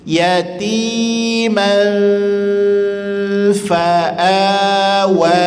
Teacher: rasakan dengungnya di bibir sehingga rasa bergetar bibir bagian bawah, kemudian menahan suara dan nafas yang dari dalam.